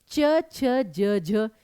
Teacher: जीभ बिल्कुल सीधी है, तालव्य ध्वनियां